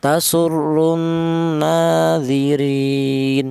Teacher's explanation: wajah yang ketiga yaitu dibaca qasar yaitu satu alif atau dua harakat